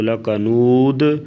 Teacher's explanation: اسے وقف کی صورت میں ساکن کر کے اچھی طرح قلقلے کے ساتھ ادا کیا جاتا ہے، یعنی آواز کو ہلانا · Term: قلقلہ